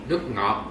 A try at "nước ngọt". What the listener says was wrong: So when you pronounce OT, you don't close mouth, okay? Not nước ngọt. That is wrong. You have to say nước ngọt.